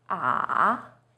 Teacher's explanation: It first dips down, then rises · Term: Third tone